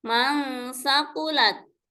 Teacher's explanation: menyamarkan nun sukun atau tanwin karena adanya timbul suara dengung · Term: ikhfa